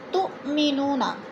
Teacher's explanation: تؤمنون، تو جو ہے حمزہ ساکنہ ہے، جھٹکا دے کر پڑھیں گے۔